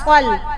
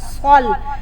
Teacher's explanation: صاد زبر لام صل، صاد کو تھوڑا سا موٹا پڑھنا ہے، صاد کو سا کر کے نہیں پڑھنا